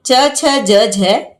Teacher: ये स्पर्श व्यंजन थे लेकिन आदिकालीन हिंदी में ये स्पर्श संघर्षी हो गए